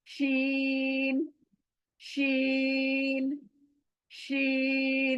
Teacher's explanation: यानी जबान का बीच का हिस्सा, और ऊपर का तालू, ऊपर तालू को लगने से शीन, शीन अदा होता है।